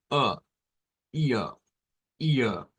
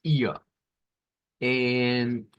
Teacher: no se pronuncia como ere, sino que se pronuncia con esto, que es una A media centralizada. Es como ia, ia, no es ia como nosotros hacemos hacia el frente, es ia.